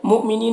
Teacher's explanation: یہاں پر حمزہ ساکنہ ہے، جھٹکا لگے گا